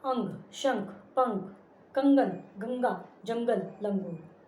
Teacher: अनुस्वार, इसका प्रयोग नाक से किया जाता है।